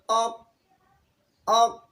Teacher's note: تو ہم جب کہ اق پڑھتے ہیں تو زبان کا جو جڑ ہے اوپر کی تالو کی طرف لگ جاتا ہے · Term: قاف